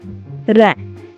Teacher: நாவின் நுனி மேல் அன்னத்தில் முதல் பகுதியை தொட்டு வருவதால் ரகரம் தோன்றுகிறது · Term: இடையின ரகரம்